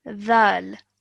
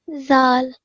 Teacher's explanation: pronounce the dhal with your tongue touching the back of your top teeth rather than the simple zal